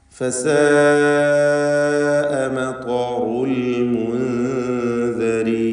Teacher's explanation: ഫസാഅ ഇതിലുള്ള ദീർഘം മദ് മുത്തസിൽ വാജിബ് എന്ന ദീർഘമാണ്. നിർബന്ധമായും അലിഫിനെ 4-5 ഹറക്കത്തിൻ്റെ അളവിൽ ദീർഘിപ്പിക്കൽ നിർബന്ധമാണ്.